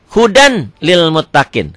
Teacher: Idgham bila gunnah, idgham yang tidak memakai dengung ke hidung.